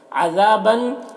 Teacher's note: ذا میں الف مدہ ہے، اسے ایک الف کے برابر کھینچیں گے۔